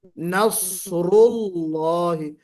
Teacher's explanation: صفیر کی وجہ سے سیٹی بجے گی، اور استعلاء اور اطباق کی وجہ سے اس میں موٹا پن آئے گا۔ نصر اللہ، را کو موٹا پڑھنا ہے، نصر اللہ، نصر اللہ، جی اس طرح پڑھنا ہے۔